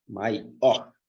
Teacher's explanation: A sílaba mais forte está aqui no or.